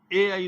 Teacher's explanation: ए आई दोनों कंठ तालु के संयोग से हैं